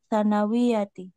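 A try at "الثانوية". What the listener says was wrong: Panjang dikit. Panjang dikit. Sanawiyati.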